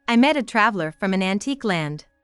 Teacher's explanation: The line is written in iambic pentameter, a rhythmic pattern consisting of 5 pairs of unstressed and stressed syllables